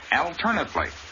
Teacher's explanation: In the adverb form of the same word, the accent is on the second syllable, alternately. But the A is still short.